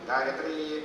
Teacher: ಕಾಣ್ತಾ ಇದೆ ಆದರೆ ಇಲ್ಲಿ ತಕಾರ ಹೇಳುವಂತದ್ದು ಎರಡು ಇವೆ ಗಾಯತ್ರಿ ಹಾಗೆ ಹೇಳೋದಿಲ್ಲ ಗಾಯತ್ರಿ ಎಂಬುದಾಗಿ ಒತ್ತಿ ಹೇಳ್ತಾರೆ ಹಾಗಾಗಿ ಅಲ್ಲಿ ತಕಾರ ಹೇಳುವಂತದ್ದು ಎರಡು ಕಾಣ್ತಾ ಇದೆ